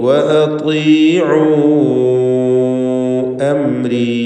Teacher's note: അതീഉ എന്ന് ത്വാഇന് കസ്റാണ് എന്നതുകൊണ്ട് കുറഞ്ഞ തഫ്ഖീം നൽകി ഉച്ചരിക്കണം. ഐനിൻ്റെ ദീർഘം മദ് മുൻഫസിൽ ജായിസ് എന്നതാണ്.